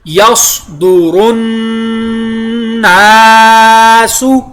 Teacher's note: یصدر الناس، صاد پر ادا ہوا، آگے نون شدہ کی وجہ سے لازماً غنہ، نون کے ساتھ الف مدہ